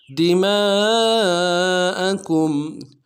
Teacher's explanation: تسفکون، لا تسفکون دماءکم، دال کو نرم سے ادا کرنا ہے، میم کے ساتھ الف مدہ ہے، الف مدہ کے اوپر مدہ اصلی ہے، تین الف دال میں کھینچیں گے · کاف کو میم ساکن کے ساتھ ملانا ہے، میم ساکن میں غنہ کریں گے۔